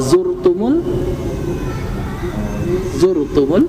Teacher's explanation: zurtumul dibaca tafkhim tebal ya